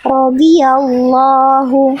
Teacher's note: Rodhi, Rodhiyallahu. Jadi, paksain dhot-nya jangan sampai berkurang kadar tebalnya